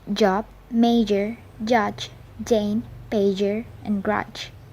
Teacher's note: Unlike ch, the sound j is accompanied by the vocal fold vibration. It is therefore called a voiced alveopalatal affricate.